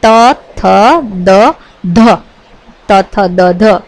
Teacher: આ વ્યંજનોના ઉચ્ચારણમાં જીભનો આગળનો ભાગ દાંતના ઉપલા ભાગને સ્પર્શે છે તેથી એમને દંત્ય વ્યંજનો તરીકે ઓળખવામાં આવે છે જો જીભનો આગળનો